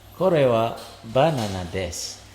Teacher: Jadi tekanannya itu pada ba